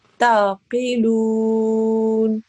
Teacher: because I actually paused on the noon which had the fatha on top, I paused there, so the fatha changed into a sukoon.